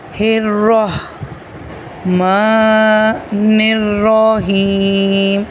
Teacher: ہا کو را کے ساتھ کنیکٹ کریں گے، را کو بھی موٹا پڑھیں گے۔ را کے بعد ہا کی آواز بھی نکالیں گے